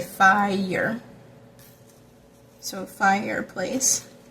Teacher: The intruding y, because there's two fi- and then -er, are two vowels, so you have to kind of say fi-y-er.